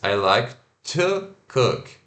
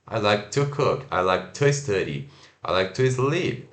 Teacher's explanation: A palavra mais importante é cook nessa frase.